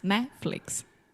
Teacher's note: we kind of have that very quick Rising intonation and then it falls down at the end